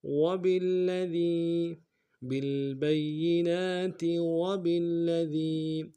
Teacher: دال کو باریک ادا کرتے ہیں، یا مدہ کے ساتھ ملائیں گے ، یا مدہ کو ایک انداز میں کھینچیں گے، وبالذی بالبینات